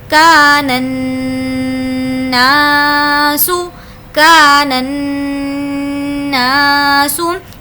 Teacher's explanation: نا کو بھی ہم نے اسی لیے کھینچ کر پڑھا ہے کہ وہاں پر الف مدہ کا قاعدہ ہو رہا ہے